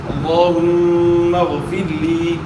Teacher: غیر موٹے حروف میں سے غیر کو آپ نے موٹا ادا کرنا ہے، را ساکن سے پہلے زیر ہے، را کو باریک ادا کرنا ہے، اور پھر اس کے بعد پھر یا مدہ ہے، یا ساکن سے پہلے زیر ہے، یا مدہ ہے، زیر کو آپ کھینچیں گے تو یا ادا ہوگی